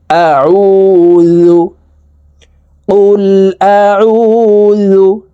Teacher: আইন হালকের মধ্যখান থেকে চাপ দিয়ে উচ্চারণ করতে হবে কারণ আইনের মাখরাজ হালকের মধ্যখান থেকে হবে আউজু কুল আউজু বা